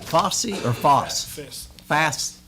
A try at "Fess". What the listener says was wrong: The O is silent. Fess, that's correct.